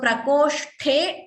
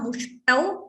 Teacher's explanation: Ta is Alpaprana. So prakoshte tha Mahaprana, mushtau ta Alpaprana.